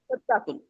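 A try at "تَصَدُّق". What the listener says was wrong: हाँ, बस त लगाएं, त लगाएं। तसद्दुक, हाँ, तसद्दुक कह दे, तसद्दुकुन भी कह लें, दोनों सही है। तसद्दुक।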